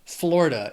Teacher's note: It also has 3 syllables and the stress is on that first syllable.